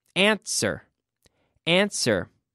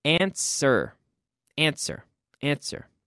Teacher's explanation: do not pronounce the W